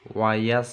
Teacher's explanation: Bacaan idhar syafawi, harus jelas. Wayas ya, huruf sin supaya s-nya jelas, agak meringis cara pengucapannya